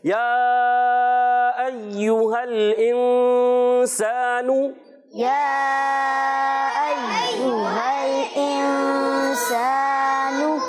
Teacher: سین کی ادائیگی سیٹی کے ساتھ اچھے انداز سے، صاد سے نہیں بدلنا چاہیے ، سا سے نہیں بدلنا چاہیے، حرف مدہ ایک الف کھینچ